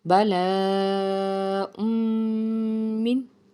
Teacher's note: रा मीम लाम वाव नून, इनके बाद मीम आने की वजह से हम यहाँ पे इदगाम करेंगे और इसको हम इदगाम नाकिस कहते हैं, इसमें हम गुन्ना करते हैं। बला मिन, मीम नून ज़ेर मिन यहाँ पे नहीं पढ़ेंगे बल्कि मीम को आगे रॉ से मिलाएंगे।